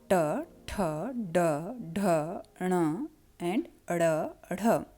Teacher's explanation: इनके उच्चारण में जीभ का अगला भाग पीछे की ओर मुड़ करके अंदर उभरे हुए दांतों के थोड़ा पीछे की जगह से टकराता है, तो इन वर्णों का उच्चारण होता है. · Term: मूर्धन्य